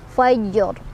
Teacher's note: Dan ro-nya karena kita berhenti, ro-nya jadi ro sukun, berarti kita harus lihat huruf-huruf sebelumnya ya. Ro-nya sukun, jadi dibacanya secara tebal. Kenapa?